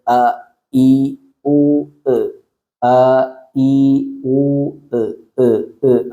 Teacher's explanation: ഹംസ് തൊണ്ടയുടെ അടിഭാഗത്തു നിന്നാണ് വരുന്നത് അ ഈ ഊ അ ഈ ഊ ആ ഒരു സൗണ്ട് കൃത്യമായിട്ട് കേൾക്കണം